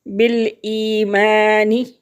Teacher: بالایمانی یا ساکن، اور یا ساکن سے پہلے لفظ جو ہے اس کے نیچے زیر ہے تو یہ یا مدہ ہے، اور یا مدہ کو ایک حرکت کے برابر کھینچ کر پڑھتے ہیں